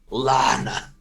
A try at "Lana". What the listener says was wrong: Less guttural, please.